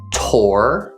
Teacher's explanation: The third syllable is tor, starting with the T sound, followed by the word or, which is one of the R-controlled vowels